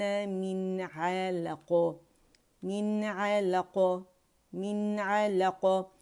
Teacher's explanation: نون کا اظہار کریں گے 1 کاؤنٹ کے لیے اس کے مخرج پہ جا کے تمام تر صفات کے ساتھ، کیونکہ عین آ رہا ہے حروف حلقی میں سے. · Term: اظہار حقیقی